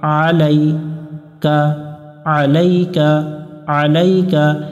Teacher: আ লা মিলবে ইয়ার সাথে লাই আলাইকা আলাইকা আলাইকা, এখানে আলাইকা পড়া যাবে না, আলাইকা গলা চেপে উচ্চারণ করতে হবে আইন অক্ষর